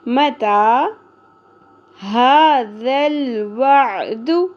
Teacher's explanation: next آ جاتے ہیں متا، میم کے اوپر سنگل زبر ہے اور تا کے اوپر کھڑی زبر ہے، متا، کھڑی زبر کو ایک الف کے برابر کھینچیں گے